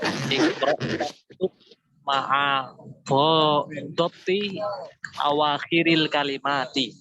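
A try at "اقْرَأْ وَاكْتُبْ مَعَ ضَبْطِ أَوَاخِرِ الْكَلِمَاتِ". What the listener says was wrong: Masya Allah, itu bagus itu.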